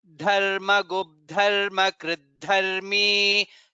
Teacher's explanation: Dharma Gubdharmi, Dha again is Mahaprana.